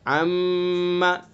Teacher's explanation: میم مشدد ہے لہذا میم کے اندر بھی غنہ کریں گے، یعنی ایک الف کے برابر ناک میں آواز لے جائیں گے